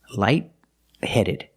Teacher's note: The T in light is a stop T